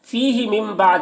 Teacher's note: فیہ من بعد یہاں پر نون ساکن کے بعد با ہے، تو نون ساکن کے بعد با ہے، تو نون کو میم سے بدل کر غنہ اخفا کے ساتھ پڑھیں گے، اس کو اقلاب کہتے ہیں